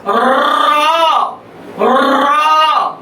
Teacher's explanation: मैंने कहा इस ध्वनि का नाम है प्रकंपित ध्वनि। जब तक जीभ कंपन नहीं करेगी उच्चारण नहीं हो सकता